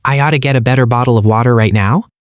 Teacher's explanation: Instead of annunciating water with a sharp crisp T, Americans typically vocalize something that sounds remarkably closer to a quick soft, D-sound. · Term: flapped T